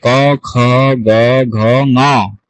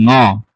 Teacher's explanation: আপনার জিহ্বাটা ঠিক আপনার তালুতে গিয়ে লাগবে, একদম শেষ যে তালু আছে সফট প্যালেট, সেই সফট প্যালেটে লাগবে। তখন এভাবে উচ্চারিত হয়।